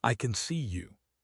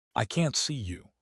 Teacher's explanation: Positive stress is on the verb, I can see you. Negative stress is on the can't.